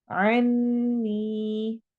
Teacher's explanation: عن نون غنہ کرنا ہے اور نی میں یا مدہ کرنی ہے۔